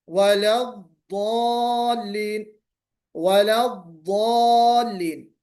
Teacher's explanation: دوسری ایک صفت کیا ہے؟ اس کے اندر ایک صفت ہے موٹا پن، یعنی اس حرف میں استعلا کی صفت ہے، منہ بھر کے · اب یہ نہیں کہ بہت زیادہ لمبی ہو جائے. تو استطالت کا مطلب یہ کہ آواز بالکل تھوڑا جم کر ٹھہر کر ایسے نکلے کہ سننے والے کو لگے کہ تھوڑی آواز ضاد کی لمبی ہو کے نکلے